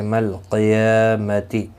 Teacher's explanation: قاف مستعلیہ ہے، پر پڑھا جائے گا، یا کے اوپر کھڑی زبر ہے، ایک الف کی مقدار کے برابر کھینچ کر پڑھیں گے، تی کو کھینچنا نہیں۔